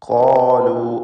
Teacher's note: ഖാഫും അതിൻ്റെ ദീർഘാക്ഷരമായ അലിഫും തഫ്ഖീം ചെയ്ത് സ്വരഭാരത്തോടെ ഉച്ചരിക്കേണ്ടതാണ്